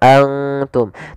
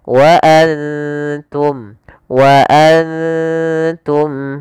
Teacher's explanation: Cara membacanya yaitu kita samarkan ke ta, dan ta hurufnya tipis, jangan antum, tapi dia wa antum, wa antum. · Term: ikhfa